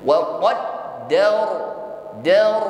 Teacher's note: Wa qaddar, dar ditutup dengan huruf ra, maka ra-nya di sini sukun ya. Kita munculkan sifat takrir, harus ada getaran ya, irti'adu tarful lisan, getaran pada ujung lidah. Namun getaran di sini harus tafkhim atau tebal. Wa qaddar, dar, tidak dar, tapi dar, menebal.